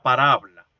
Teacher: el vibrante simple ocupa la posición que la actualidad posee o evidencia la consonante lateral y viceversa